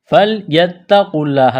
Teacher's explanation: تا میں سختی کریں گے، قاف کو موٹا کرنا ہے